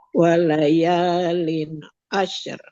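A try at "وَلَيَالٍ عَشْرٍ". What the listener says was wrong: Nah, coba ini udah oke sebenarnya. Sudah oke. Udah lumayan lah. Coba sini jangan memantul. Asyr, jangan asyr. Tapi mengalir suaranya. Asyr.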